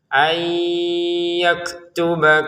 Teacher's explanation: Kemudian nun yang diikuti oleh ya dibaca dengan bunyi sengau.